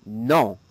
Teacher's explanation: a bit more nasal in the back of the nose and throat